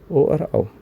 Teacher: कंठ और ओष्ठ से इन दो से हमारा निकलता है ओ और औ